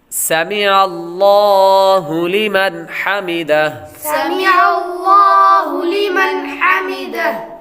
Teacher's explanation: سمع اللہ، یہاں پر لفظ اللہ کے لام کو پر پڑھیں گے